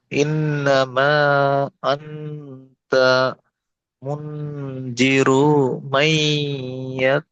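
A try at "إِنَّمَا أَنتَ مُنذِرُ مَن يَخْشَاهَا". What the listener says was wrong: মুনজিরু টান হয়ে যাচ্ছে, র পেশ রো হারাকাত তাড়াতাড়ি পড়তে হবে। ইন্নামা আনতা মুনজিরু মান ইয়াখশাহা।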